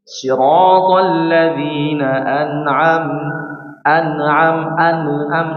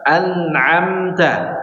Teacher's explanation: Nun sukun dan mim sukun sifatnya adalah apa? Baini, ya, setengah mengalir, maka jangan sampai diputus. Maka terjadi qalqalah kalau diputus.